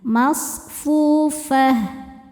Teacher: Tak marbutoh namanya ini ya. Berhentinya adalah dengan diganti menjadi huruf ha besar. dan harokatnya apapun ya tetap hak sukunnya.